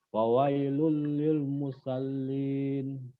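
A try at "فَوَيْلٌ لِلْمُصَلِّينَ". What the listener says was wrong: O bunyinya bukan a. Musa. Kalau Musa nanti pakainya sin. Ini pakainya so. Musallin.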